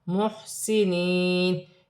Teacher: یا ساکن سے پہلے زیر یا مدہ بن رہی ہے، ایک الف کی مقدار کھینچ کر پڑھا جائے گا، وف کی صورت میں زبر گر جائے گی اور نون ساکن ہو جائے گی۔